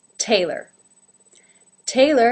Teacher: Taylor has the ay as in say diphthong and the second syllable ler ler again without a real pure